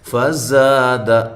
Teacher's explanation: فزاد، زا الف مدہ، زا کو زور سے ادا کرنا ہے سیٹی کے ساتھ